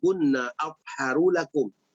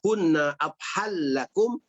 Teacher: Maka yang baca dengan afharu lakum izhar, yang baca dengan afhal lakum ya, idgham.